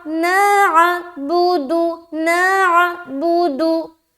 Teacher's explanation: تو عین کو حذف نہیں کرنا، عین کو صاف اور واضح طور پر نکالنا ہے۔